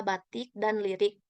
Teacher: direalisasikan sebagai bunyi I besar apabila berada pada silabel tertutup atau silabel berkoda seperti pada kata batik dan lirik.